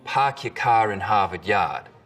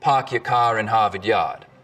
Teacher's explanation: In Boston, it's usually pretty fronted. Park your car in Harvard Yard. In Rhode Island, it's back. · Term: the start vowel